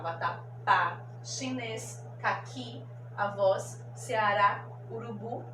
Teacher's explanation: Todas são oxítonas, hoje tem a última sílaba mais forte